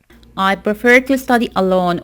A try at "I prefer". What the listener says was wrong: you need to put more stress on that second syllable